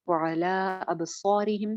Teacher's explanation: स्वाद मोटा रहेगा और स्वाद के साथ का अलिफ भी मोटा होगा।